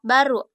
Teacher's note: Bunyi B dengan ciri-ciri hidup, oral, bilabial, plosif